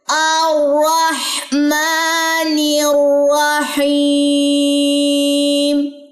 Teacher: میم کو لمبا کرنا ہے، کھڑا زبر اس پہ